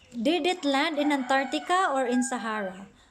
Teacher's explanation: all of the words at the last are rising because we are expressing a choice question